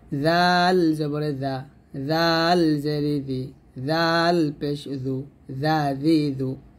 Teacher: জিহ্বাটা উপরে দাঁতের আগে লাগিয়ে পাতলা করে উচ্চারণ করতে হবে